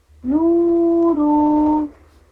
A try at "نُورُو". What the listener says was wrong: را کو جلدی پڑھنا ہے. نورو.